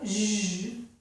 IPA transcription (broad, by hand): ʒ